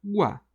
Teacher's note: Isso aqui é um ditongo. Por quê? Tem duas vogais numa mesma sílaba, U e o A.